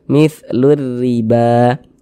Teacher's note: huruf ro memiliki harakat kasrah dibaca tarkik Dibaca tipis tipiskan huruf rnya · Huruf ra kalau memiliki harokat kasrah, ini baris satu di bawah huruf namanya harokat kasrah atau tanda baca kasrah atau baris kasrah. Huruf ra memiliki harokat kasrah dibaca tarkik, dibaca tipis-tipiskan huruf ra-nya.